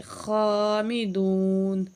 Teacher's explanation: خا کے اوپر کھڑی زبر ہے، ایک الف کے برابر کھینچیں گے